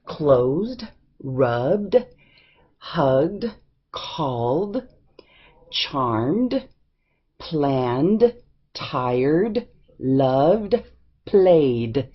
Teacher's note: the words ending with the voiced sounds and it provides no extra syllable